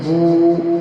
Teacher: second example, با واو پیش بو، واو ساکن ہے، واو سے پہلے پیش ہے، اس کو ایک الف کے برابر کھینچیں گے